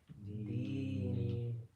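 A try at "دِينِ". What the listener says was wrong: Ni. Stretch it a little bit more. Dini. You're not stretching the noon.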